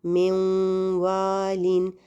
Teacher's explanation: اسی طرح من والین، اب اس میں جو آپ کو غنہ سنائی دے رہا ہے وہ واو میں تو نہیں ہوتا غنہ، تو یہ جو غنہ ہے یہ اس نون کا باقی بچ گیا ہے، یعنی یہ نون مکمل طور پر مرج نہیں ہوا بلکہ اس کا غنہ باقی ہے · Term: ادغام ناقص